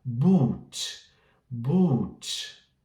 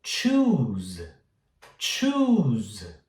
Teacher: sentir que eu tenho que alongar um pouco essa vogal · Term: U longo